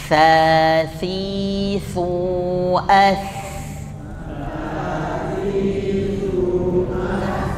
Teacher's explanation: huruf tha itu lidahnya terlihat karena lidah menyentuh bagian gigi seri bagian depan